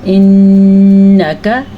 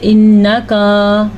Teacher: ناک میں آواز چلی جائے گی اور آپ کی آواز کو ٹھہر جانا ہے وہاں پہ. انک، کاف کو لمبا نہیں کرنا. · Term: غنہ